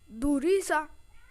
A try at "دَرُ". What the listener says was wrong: درو. را پر پیش آ گیا نا آپ نے لگا دیا دال پر.